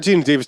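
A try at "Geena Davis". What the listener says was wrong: Gina Davis. It just sounded like you said James Davis.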